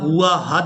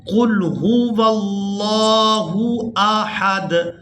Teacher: ہم نے یہاں ہا کو الگ اور حمزہ کو الگ ادا کرنا ہے